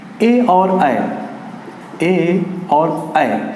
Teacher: ए और ऐ कहां से बोले जाते हैं, कंठ और तालु दोनों से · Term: कंठ तालु